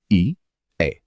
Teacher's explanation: कंठ और तालु दोनों से बोले जाने वाले वर्ण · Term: कंठ तालव्य वर्ण